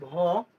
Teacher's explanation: আর যখন আমরা ভ উচ্চারণ করি ভ, তখন আমাদের বেশি বাতাস বের হয়। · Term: মহাপ্রাণ